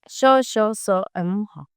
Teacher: जिन व्यंजनों के उच्चारण में वायु घर्षण करती हुई बाहर निकलती है जिससे ऊष्मा उत्पन्न होती है उन्हें उष्म व्यंजन कहते हैं।